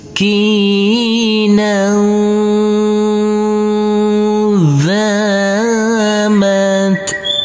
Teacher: Di sini ada huruf nun yang berfathah tanwin bertemu dengan huruf dzal, maka nanti tanwinnya di sini kita baca dengan samar-samar dan berdengung. Pada waktu berdengung, persiapan masuk ke huruf dzal.